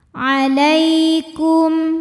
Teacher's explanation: Lai ada harfulin atau huruf lin, sebab ada ya sukun didahului baris fathah, maka dibacanya lembut atau lunak. Alaikum. Kum ada hukum idhar syafawi karena mim sukun menghadapi huruf selain mim dan ba yaitu huruf waw, maka mim sukun kita bunyikan dengan jelas.